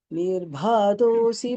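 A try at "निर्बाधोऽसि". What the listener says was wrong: நிர்பா தோசி தோசின்னு காதுல விழுந்தது அது மட்டும்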